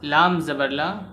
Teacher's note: میم کو ظاہر کر کے پڑھنا چاہیے، جیسے اردو میں ہم تم کی میم پڑھا جاتا ہے۔ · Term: اظہار شفوی